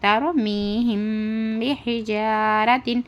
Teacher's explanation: را ساکنہ سے پہلے زبر ہو تو کیا کرنا؟ را کو موٹی آواز کرنا